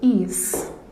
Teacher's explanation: o A forma uma sílaba e o I forma outra sílaba. Segundo a regra, para ser semivogal, na união com uma vogal, ele precisa formar uma sílaba só.